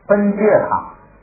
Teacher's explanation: 前边加了马，要带鼻冠音